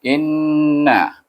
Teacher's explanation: Perhatikan di sini, inna, apa yang perlu, apa yang ada hukum di sana dekat inna, iaitu ada hukum wajib gunah di mana nun bertasydid, kita kena baca dengan dengung, iaitu dua harakah